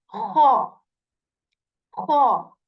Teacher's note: We articulate kha from the portion of throat that is near to our mouth, and there is this scratch sound in it